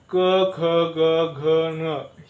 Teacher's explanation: क ख ग घ न हे जे आहे मित्रांनो यासाठी काय करावे लागते जीभ एकदम मागच्या बाजूला चिटकवावी लागते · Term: स्पर्श व्यंजने